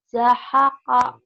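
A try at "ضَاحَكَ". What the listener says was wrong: Za. Panjang zanya.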